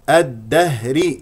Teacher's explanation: الهاء صدريه وضعيفه باهتزاز الاوتار الصوتيه من اقص الحلق